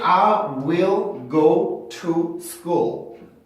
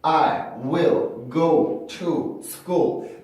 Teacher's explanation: 근데 문장 안에서 이 to는 굉장히 많이 플랩이 됩니다.